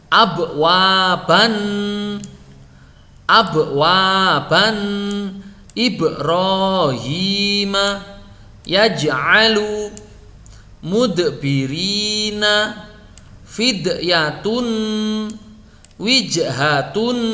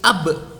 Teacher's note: Huruf ba, dal, dan jim sukun membacanya disertai suara tambahan yang kuat dan dibaca tipis. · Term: suara qalqalah pantulan